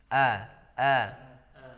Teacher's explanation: kemudian a6t nah disini huruf hamzah ya yang harus kita perjelas hamzahnya itu dengan mengeluarkannya dari pangkal tenggorokan ah dengan hentakan dengan sifat syiddah kuat